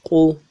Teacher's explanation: قاف پیش قو، قو پیش ادا کرتے ہوئے ہونٹوں کو گول کریں گے۔